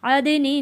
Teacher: دال کی آواز واپس پلٹ کر آئے گی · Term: حروف قلقلہ